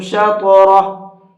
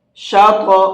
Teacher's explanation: طا کو پر کر کے بھی پڑھیں گے اور ساتھ ساتھ اس کے اندر قلقلہ بھی کریں گے۔ شاط، اس طرح سے۔